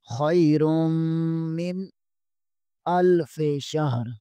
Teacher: خیرم، میم زیر کو نون کے ساتھ بھی ملائیں گے۔ خیرم من، نون ساکن کے بعد امزہ ہے، امزہ حروف حلقی میں سے ہے، یہاں پر غنہ نہیں، اظہار ہوگا۔ خیر من الف شہر، حمزہ زبر کو لام کے ساتھ ملائیں گے اور شین ہا، شین زبر کو ہا کے ساتھ ملائیں گے۔